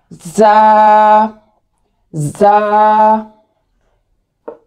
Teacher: ये थोड़ा सा हम सख्ती के साथ पढ़ेंगे और जुबान जो हमारी वो दांतों के पीछे रहेगी